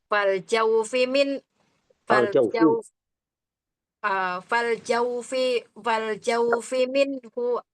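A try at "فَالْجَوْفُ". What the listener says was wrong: Bukan jaufi. Bukan fal jaufi, fal jaufu.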